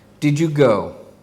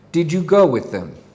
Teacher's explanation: the first sentence will end with a Content word which is stressed and the second sentence will end with the function word which is not stressed